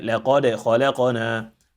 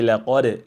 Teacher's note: لقد, we have a qalqala here, pay attention to it, and the qalqala must be flat and not heavy